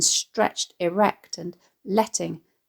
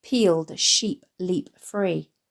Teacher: the repeated short sounds in stretched erect and letting, contrasting with the repeated long e sounds in peeled sheep leap free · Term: assonance